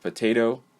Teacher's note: in the first syllable of potato the schwa sound is used